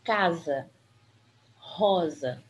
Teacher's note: o s aparece entre duas vogais ele tem um som de z